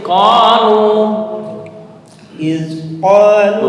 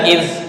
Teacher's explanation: iz qalu Bukan id. Nah, ujung lidah dengan gigi atas